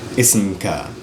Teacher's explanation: in Fusha, it sounds like ka or ki. So there's actually fatha or kasra on the k.